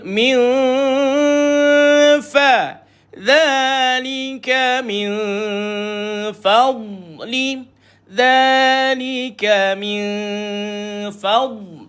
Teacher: Fa ni huruf istifal, huruf yang lidah dia stay, tak terangkat.